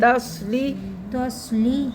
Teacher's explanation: توس نہیں کرنا ہے، تا کو باریک کرنا ہے